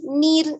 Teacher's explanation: Kemudian ro memiliki sifatnya ya, ketika ro itu sukun berarti kita lihat sebelumnya. Sebelumnya apa? Kasroh, berarti dibacanya tipis. Berarti nir.